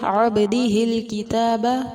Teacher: ہا زیر کو لام ساکن کے ساتھ ملا کر پڑھیں گے